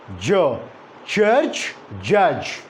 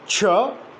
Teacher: the airstream is blocked for a moment completely and then released but through a narrow opening and that's the reason why a friction is produced that is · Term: affricate sound